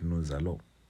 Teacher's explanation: S is still located between those vowels, hence its pronunciation comes out as Z. Hence why we said nous allons.